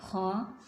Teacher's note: ये गले के मुंह वाले हिस्से की तरफ से अदा होती है